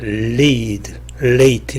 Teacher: 먼저 L은, 영어 L은, 그리고 R도 마찬가지지만 모음 앞에서 그 음가가 가장 명료하게 나타납니다. 그래서 모음 앞에서 나오는 L을 clear L 혹은 light L이라고 이렇게 얘기합니다.